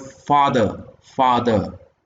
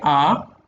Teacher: when you say ah like uh in the word father father when you say ah it is the back of the tongue that is raised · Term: back vowel